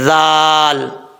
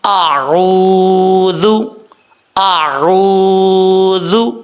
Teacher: آگے ذال ہے، ذال بغیر سٹی کے پڑھا جائے گا، اور ذال کا مخرج ہے زبان کا سیدھا اوپر والے دانتوں کے اندرونی کنارے سے لگے تو ذال پڑھا جاتا ہے، ذال۔ اس کو موٹا بھی نہیں پڑھنا اور سٹی کے ساتھ بھی نہیں پڑھنا۔